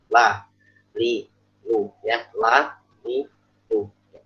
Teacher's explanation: Lam itu di bagian adna, ujung lidah. Ya. Ujung lidah yang merupakan bagian akhir dari makhrajnya dal, makhrajnya bot.